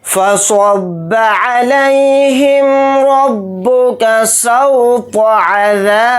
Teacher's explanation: بھی جلدی پڑھیں گے، را کو با میں ملا دیں گے، را کے اوپر زبر ہے تو را کو موٹا یعنی پر پڑھیں گے ، با کو جلدی پڑھیں گے، کاف کو جلدی پڑھیں گے، · سواد کو موٹا یعنی پر پڑھیں گے اور سواد کو با میں ملا دیں گے